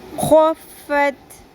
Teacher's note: خو کو پر کریں اور خراش کی آواز بھی آنی چاہیے